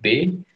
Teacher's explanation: Bunyi itu terhasilkan dari aktivitas bibir bawah bertemu dengan bibir atas. Kalau diperhatikan ya, coba B berarti bibir bawah bertemu dengan bibir atas. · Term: bunyi B